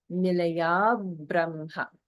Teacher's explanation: there is holding after dirgha, even though there's two separate words, and that is in the middle of the line with nilaya brahma.